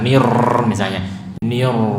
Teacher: getarannya lembut, jangan terlalu kasar.